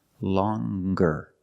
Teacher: longer with a nasal sound plus the hard G